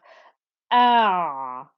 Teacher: Ayn as a letter, when it has a sukoon, has some sound that flows through it. So it's not a sharp stopping noise, but there is some sound that flows through. So that's why you have ah.